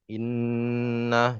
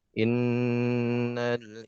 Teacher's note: Dengan gunnah ini artinya samar ya, keluarnya dari khoisum ya.